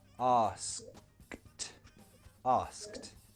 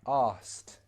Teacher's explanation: when we speak quickly pronunciation gets a little more relaxed so this is how we would pronounce it naturally in a sentence we would remove the k sound